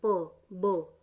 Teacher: तो बिलेबियल होता है जिसमें कि जो आपके होंठ हैं वो बंद होते हैं बोलते हुए · बिलेबियल होते हैं जिसमें आपके जो होंठ होते हैं वो बोलते हुए एक दूसरे से मिलते हैं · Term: bilabial plosive